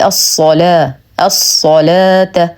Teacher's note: نرقق اللام ونخلص من تفخيم الصاد